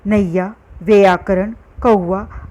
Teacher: पश्चिमी तथा पूर्वी दोनों ही क्षेत्र में ऐ, औ का उच्चारण क्रमशः संयुक्त स्वर ऐ, औ रूप में होता है